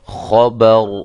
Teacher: را کو میں نے موٹا کیا ہے، را کے اوپر جب ہم نے وقف کیا تو را ساکنہ ہو گئی